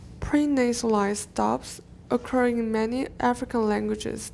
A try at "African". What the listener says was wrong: African, watch the N. African languages. African. We're missing that articulation, the sojian in. African languages should be African languages.